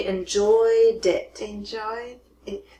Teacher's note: Because it ends with the D sound, you're going to connect it to the next word.